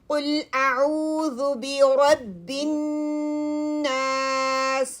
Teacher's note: रा के लिए tip of your tongue touching the top front edges को करेगा रा को मैंने मोटा पढ़ना है और जो जेर जो है · नहीं है बल्कि बारीक पढ़नी है नून प गुन्ना करना है और सीन की आवाज विसल वाली निकालनी है · काफ हैवी है आपकी बैक की पीछे जाएगा जो काफ के लिए जुबान ये पोजीशन होनी चाहिए ठीक है